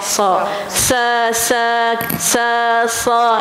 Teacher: rumahnya di bahagian hujung lidah dengan gigi bawah ada desiran dia ada angin ada angin kan sa sa sa sa gitu kan jadi pangkal lidah tinggikan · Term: huruf sad